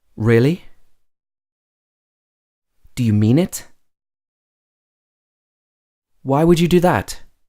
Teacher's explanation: when you're expressing that you're surprised or you're shocked you'll also use rising intonation